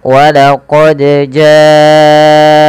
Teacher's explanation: panjangkan huruf ja-nya sepanjang 4 harokat atau 5 harokat, karena ja di sini adalah mad wajib muttasil.